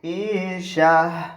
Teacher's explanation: اس گول تا پر وقف کرتے وقت ہم نے ہا اس کو بنا دینا ہے. ایسے ہی جہاں بھی گول تا ہوتی ہے اس کے اوپر وقف کرتے وقت اس کو ہم نے ہا بنا دینا ہے.